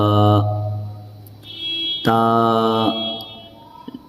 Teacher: زبان کی نوک اور اوپر کے دانتوں کی جڑ، سامنے کے جو چوڑے سے جو دانت ہوتے ہیں ان کی جڑ سے یہ نکلتا ہے تا